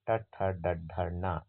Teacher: ಶಿರಸ್ಸನ್ನೇ ಮೂರ್ಧ ಎನ್ನುತ್ತಾರೆ ಅಲ್ಲಿಂದ ಜನಿಸುವ ವರ್ಣಗಳನ್ನು ನಾವು ಮೂರ್ಧನ್ಯ ಧ್ವನಿಗಳು ಅಂತ ಕರೀತೀವಿ